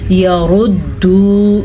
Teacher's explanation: را کو موٹا پڑھنا ہے، را پہ پیش ہے اسی لیے